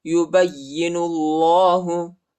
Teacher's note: با کو یا کے ساتھ ملائیں گے، یا پر شد آیا، یا کو شدت کے ساتھ سختی کے ساتھ پڑھیں گے